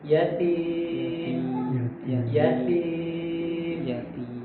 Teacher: huruf ta itu kan huruf yang tipis ya istifal dia jadi ringan aja